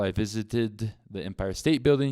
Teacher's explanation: when the verb ends in the sound d or t and in this case it would be pronounced with an extra syllable id